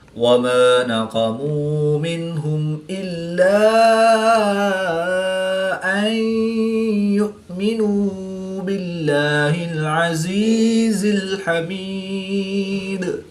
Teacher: میم ساکن کے بعد حرف با اور میم کے علاوہ حرف حمزہ ہے تو یہاں پر اظہار شفوی ہوگا یعنی غنہ نہیں کریں گے بلکہ میم ساکن کو ظاہر کر کے پڑھیں گے · نون ساکن کے بعد یا حروف ینملون میں سے ہے تو یہاں پر ادغام مع الغنہ ہوگا یعنی غنہ کر کے پڑھیں گے۔ حمزہ ساکن ہے تو اس کو جھٹکا دے کر پڑھیں گے · واو ساکن سے پہلے پیش ہے تو واو مدہ، ایک الف ان 2 حرکات کے برابر کھینچ کر پڑھیں گے۔ نون ساکن کے بعد ہا حروف حلقی میں سے ہے تو یہاں پر اظہار ہوگا یعنی غنہ نہیں کریں گے بلکہ نون ساکن کو ظاہر کر کے پڑھیں گے۔